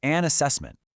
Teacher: That n sound just jumps over to the next word. It sounds like one long word, an assessment. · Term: Sounds link together